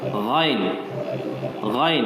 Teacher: Ada getaran dekat langit.